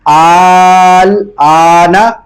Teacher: جو پہلا حمزہ ہے اس لفظ میں اس کو 4 الف کی مقدار کھینچیں گے کیونکہ اس کے اوپر مد ہے، اور جو دوسرا حمزہ اس کو 1 الف کی مقدار کھینچیں گے کیونکہ اس کے اوپر کھڑی حرکات ہے.